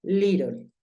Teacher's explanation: la doble t puede sonar como una r en algunos casos